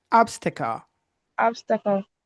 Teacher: the TA is like a schwa sound. We don't say T, we don't say ta, but it's not like a T.